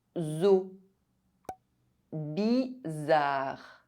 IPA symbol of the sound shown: z